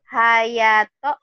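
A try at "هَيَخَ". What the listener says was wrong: hayakho. Bukan to ini. Kho.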